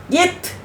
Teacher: மேல்வாய் பல்லின் அடியை நாக்கின் நுனி பொருந்துவதால் தோன்றுகின்றன